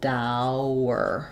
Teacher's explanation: that W happens as I link between the au which is rounded and the er which is unrounded. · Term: hidden w sound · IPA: /ˈdaʊɚ/